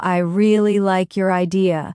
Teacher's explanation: Stress on really and idea.